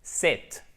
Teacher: le I court, il est entre le E et le I français